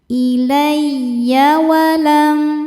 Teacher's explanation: cukup dibaca dengan nabr. Naikkan intonasi suara, jangan ditahan.